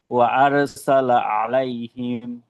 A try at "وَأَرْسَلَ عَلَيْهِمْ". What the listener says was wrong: আ এটা এটা কিন্তু এখানে কোন মাদ নেই হ্যাঁ এবং এটা হলকের শুরু হইতে হামজা আর রটা মোটা